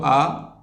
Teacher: दीर्घ में दो मात्रा का समय लगता है, यही मेन डिफरेंस है बोलने में, ध्वनि के उच्चारण में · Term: दीर्घ स्वर